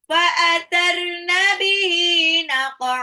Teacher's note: qafnya pantulin dulu ke qalqala, a-nya ini adalah mad iwad, bukan naq'an